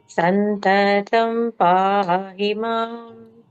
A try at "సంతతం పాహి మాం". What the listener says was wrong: 3 దెబ్బలు కాదు, ఒక దెబ్బలో రెండే.